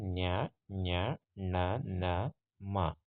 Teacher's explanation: ಮೂಗಿನ ಸಹಾಯದಿಂದ ಹುಟ್ಟತಕ್ಕಂಥ ವರ್ಣಗಳನ್ನು ನಾವು ನಾಸಿಕ ಧ್ವನಿಗಳು ಅಂತ ಕರಿತೀವಿ